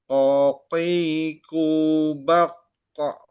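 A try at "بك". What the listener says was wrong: Jangan bak kok, jangan ditahan. Bak kok langsung.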